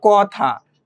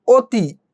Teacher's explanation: অটা যখন ও হয়ে যাবে সেটাকে বলা হবে অস্বাভাবিক উচ্চারণ